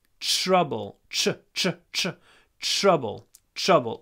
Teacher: when we pronounce TR, we usually say ch